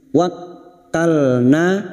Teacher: na fathah diikuti alif 2 harokat mad tabi'i